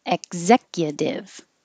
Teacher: i don't release the k let me change this i hold my tongue in the k